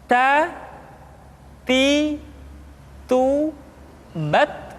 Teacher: huruf Ta ketika diucapkan terdengar ada nafas yang mengalir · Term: sifat al-hamas